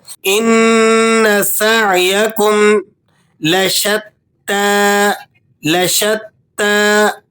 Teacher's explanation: नून मुशद्द है और ऐन हरूफ हलकी है तो इस पर आपने बहुत ध्यान के साथ इसे हलक से पढ़ना है · نون پر آپ غنہ ادا کریں گے، نون مشدد ہے اور عین حروف حلقی ہے، تو اس پر آپ نے بہت دھیان کے ساتھ اسے حلق سے پڑھنا ہے۔